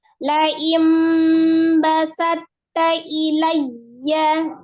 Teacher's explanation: Mempunyai makhraj yang sama antara ta dengan to, ujung lidahnya ada di pangkal gigi seri bagian atas, hanya berbeda sifat. Kalau to al-jahru jelas, kalau ta-nya al-hams. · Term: idgham mutajanisain